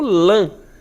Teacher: O lã, dá a ideia como se tivesse o N aí depois